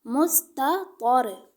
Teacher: ایک میں آپ کو ہجے کر کے بتاتی ہوں، میم پیش سین مس، تا زبر تا، مستا، طا زبر طا، مستطا، میم سین پیش مس، تا زبر تا، مستا، طا را زبر طر، مستطر۔ اب دیکھیں تا کو ہم باریک پڑھ رہے ہیں اور طا کو موٹا